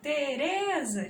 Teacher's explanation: A sílaba mais forte é o re.